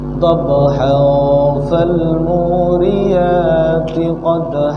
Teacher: Nah, di situ kan fa. Tanwin berjumpa dengan fa. Apa hukumnya? Ikhfa. Jadi dibaca agak samar-samar. Kalau disambung, dhabha fal muriyati qadha.